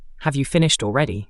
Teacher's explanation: It's a rising then falling tone.